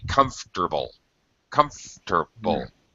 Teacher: try to drop the o r in comfortable just uh native speakers just say comfortable comfortable like three syllables